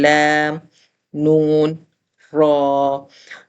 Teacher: نون پڑھتے ہوئے ناک میں سے بھی نون کے ساؤنڈز کا ہمیں فیل ہوتا ہے۔